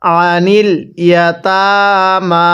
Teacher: আইনটা পড়ার সময় গলার মধ্যে চাপ দিয়ে পড়ব